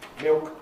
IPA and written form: mɪok (milk)